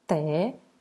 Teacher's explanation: Se eu chamo tecodonte, aqui a sílaba tônica é o dom.